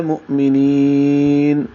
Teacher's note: آواز روک لینی ہے نون پہ، نون کو ظاہر کرنا ہے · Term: اظہار